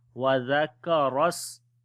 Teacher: قد أفلح ما تزكى وذكر اسم ربه فصلى وذكر اسم. Zal we read in soft sound, kaf we read in light sound, and ra we read in heavy sound